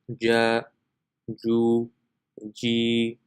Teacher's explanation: the makhraj of jim is the center of the tongue when touching the palate